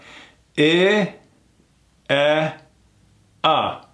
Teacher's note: it's like we're opening the mouth a little more as we go down